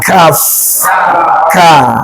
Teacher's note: Pangkal lidah sedikit ke depan.